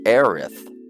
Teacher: he was making like a th sound at the end